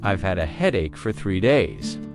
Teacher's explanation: Stress, headache, and 3 days.